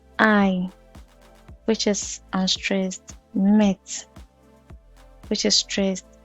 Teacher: each line has 5 sets of 2 beats. The first is unstressed and the second is stressed. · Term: iambic pentameter